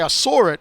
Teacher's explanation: putting a sort of an R sound on the end of saw rides into the I of it